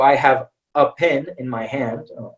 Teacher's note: normally we don't say a we say ah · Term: indefinite article